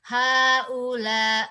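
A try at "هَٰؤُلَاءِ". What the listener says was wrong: Haula i, mana i-nya?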